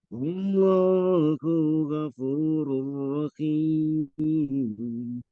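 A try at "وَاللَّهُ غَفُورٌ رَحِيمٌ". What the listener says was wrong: Diulang kembali, domir hu-nya dibaca pendek. Wallahu ghafur.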